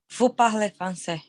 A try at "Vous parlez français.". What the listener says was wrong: Très bien.